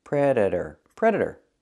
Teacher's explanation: the t is pronounced as a fast D